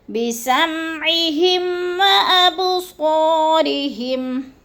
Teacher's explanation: بِسَمْعِهِمْ پہ اظہار شفوی ہے، غنہ نہیں کریں گے، لفظ کو ظاہر کر کے پڑھیں گے۔